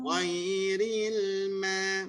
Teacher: Ghairil ma. Masa sebut ma, masa ghain baru lidah naik ke atas. Baru dia jaga, baru isti'la.